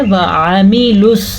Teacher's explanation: ہم نے اس کو پڑھنا ہے وَعَمِلُوا، واو زبر و، عین زبر آ، لمبا نہیں کرنا لفظ کو کیونکہ ان کے اوپر زبر ہے، زبر زیر پیش تو لمبی ہو ہی نہیں سکتی۔